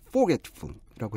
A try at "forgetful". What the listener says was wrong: 두 번째 음절, 즉 get에다가 좀 더 강세를 주시면 편한데요. Forgetful. Forgetful.